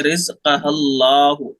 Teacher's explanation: अगर इसको मिला करके पढ़ेंगे तो ये अलिफ हट जाएगा। ला तहमिलु रिज़्क़हा अल्लाहु यरज़ुक़ुहा, हा को डायरेक्ट लाम से मिला देंगे।